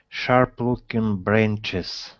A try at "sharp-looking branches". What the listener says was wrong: Push the tongue down so it doesn't hit the top of your mouth. So it's sharp-looking branches.